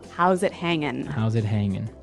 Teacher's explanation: Now, you notice in the spelling that we do have a G at the end, ing, right? Yeah, but usually you don't really pronounce the G in this context because it's very informal